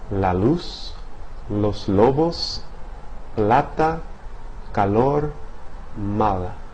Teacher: In a Spanish sequence like loose, right? The tip of the tongue is positioned against the ridge behind the front teeth and air escapes laterally.